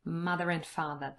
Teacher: for me there's a intrusive r between mother and